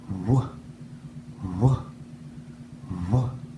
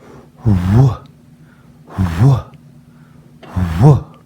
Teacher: For the letter W, the W sound, also known as a windy sound, our lips are rounded and make this sound. W, w, w. Take a closer look at my mouth as I make the W sound.